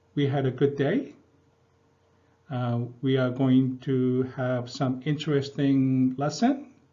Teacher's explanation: even though it's not a question sentence, I end up ending the sentence going up like a questioning. It's like, "We had a good day?" "We are going to have some interesting lessons?" that sort of kinds of things.